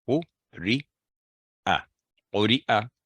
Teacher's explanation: آگے قری'a, یہاں بھی حمزہ ہی پڑی جائے گی, اور قو اور ری لمبی آواز ہوگی 1 سیکنڈ, قو ری آ, قری'a, تینوں ساؤنڈ 1 سیکنڈ.